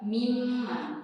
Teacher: cara membacanya itu dengan merapatkan dua bibir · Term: huruf mim